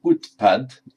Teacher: In fact, it's originally an ud, but it becomes a t before a p. So utpad. This ut is actually cognate with our English out, but in Sanskrit and Pali has more the meaning of up, the idea of out and up.